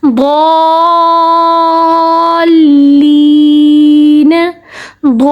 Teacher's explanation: مد لازم کو 3 سیکنڈ تک کھینچ کے پڑھا جاتا ہے